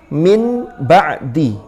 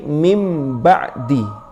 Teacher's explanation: Lalu nunnya ini berubah menjadi mim pengucapannya. Kenapa? Karena agar tamatsul mirip dengan ba dalam syafataninya, yaitu bibirnya, sehingga bukan min ba'di tapi menjadi mim ba'di. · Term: iqlab